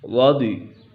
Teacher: ضاد بھی پر ہے اور را بھی پر ہے کیونکہ را پر زبر ہے۔ رضی ضاد پر ہے، حروف مستعلیہ میں سے ہے۔